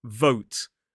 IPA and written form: vəʊt (vote)